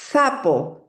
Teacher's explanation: Y estoy alargando este sonido de la S, este sonido fricativo, para darle mayor énfasis, ¿no? Para que la atención del niño se sostenga sobre ese sonido.